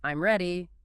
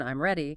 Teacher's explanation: If you say it with a falling tone, I'm ready, it's a statement, >> but if you say it with a rising tone, I'm ready, it becomes a question even though the words are identical. · if you say it with a rising tone, I'm ready, it becomes a question even though the words are identical. >> It completely changes the meaning and function.